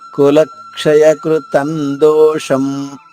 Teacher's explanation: దోషం ఇక్కడ అనుస్వర ఉచ్చారణ మా పొల్లుగా.